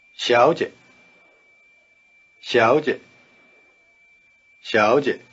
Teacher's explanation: the tones are rising neutral with the weak short neutral tone in a medium pitch